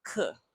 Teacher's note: Ke, that's fourth tone. Ke, a sharp drop.